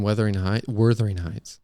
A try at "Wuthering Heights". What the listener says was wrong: No, there's no R. There's no Wuthering. Wuthering. Yeah. it's just the name of it. No, Wuthering. Wuthering.